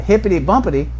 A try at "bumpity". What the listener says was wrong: Bumpity. No, you skipped the M this time.